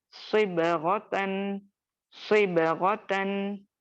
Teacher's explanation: सौद के लिए आपको मखरज के साथ साथ पीछे से जबान को भी उठाना है